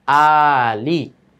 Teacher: মাদ্দে বাদল এক আলিফ টানিয়ে পড়তে হয়